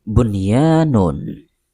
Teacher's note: diletakkan di akhir kata atau Isim contoh pada kata bunyanu Kemudian ditambahkan nun sukun di akhirnya sehingga dibaca menjadi bunyanun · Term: tanwin